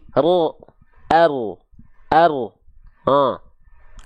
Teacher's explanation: bukan betul-betul dari ujung lidahnya banget Iya terus dari mana Bang huruf r dilafalkan dari punggung lidah